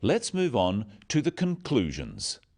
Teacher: Stressing conclusions because it's the key word in this sentence.